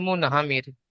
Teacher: র সাকিনের আগে জের এসেছে, তাই রকে বারিক করে পড়তে হবে।